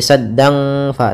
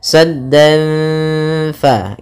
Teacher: Kita tahan gunnahnya sambil kita samarkan suara tanwinnya kepada huruf fa. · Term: ikhfa hakiki